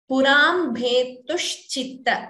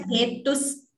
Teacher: That sha should be heard as sha and not as sa. Okay, I heard it as bhetus.